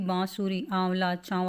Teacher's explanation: के ऊपर चंद्र बिंदु के रूप में लगाया जाता है और इस ध्वनि का उच्चारण करते समय हवा नाक और मुख दोनों से बाहर निकलती है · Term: अनुनासिक